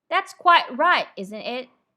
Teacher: if the t is at the end of a word you almost don't hear it at all